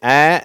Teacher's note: இது அ அப்படிங்கிற சவுண்டு சரியா தமிழ்ல வந்து ஆ உண்டு ஏ உண்டு ஆ என்ற ஓசையும் ஏ என்ற ஓசையும் அந்த உயிரெழுத்துக்கள் எல்லாம் உண்டு ஆனால் அவற்றுக்கு இடைப்பட்ட ஒளியாகிய இந்த ஒலி அ என்ற ஓசை கிடையாது